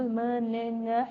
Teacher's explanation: The airstream is going out or escaping from the lungs through the nose while producing these sounds. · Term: nasal sounds